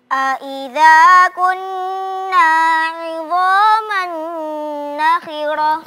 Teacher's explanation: Di situ ada gunnah 2 harakat, sempurnakan 2 harakatnya